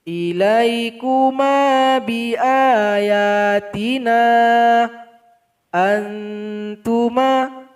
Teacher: Kenapa na ini lebih dipanjangkan? Karena ada mad asli berjumpa dengan alif. Maka dia merupakan mad jaiz mufasil, harus dipanjangkan 5 harokat.